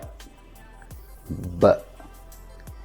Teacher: this is a plosive, which means when you produce the sound, it feels like a minor explosion out of your mouth.